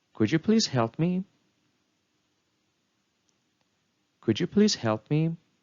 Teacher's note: in this example a falling and Rising intonation was used which shows that the speaker is hesitant